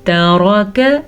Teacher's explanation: रा को पुर पढ़ना है, काफ को बारीक पढ़ना है